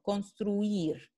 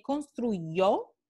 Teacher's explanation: la I no tiene ninguna fricción, construir, mientras que construyó puede ser tan simple como una aproximante, pero puede ser también hasta fricativa. Entonces, la pronunciación de la Y en construyó es muy claramente clasificada como consonante.